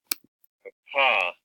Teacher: the p voiceless bilabial sound here